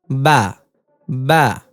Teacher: দুই ঠোঁটের ভেজা জায়গা থেকে উচ্চারিত হয়